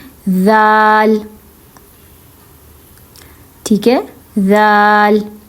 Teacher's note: दाल में भी ऊपर और नीचे वाले दांतों के बीच में जुबान रखी जाएगी